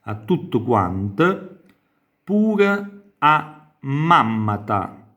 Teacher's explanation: quindi vedete a tutto quanto, la T raddoppia di tutti perché abbiamo la A preposizione che anche in questo caso fa rafforzare la consonante che segue